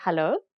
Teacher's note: usually afrikaners will just say hello with a rising intonation to indicate that it's a question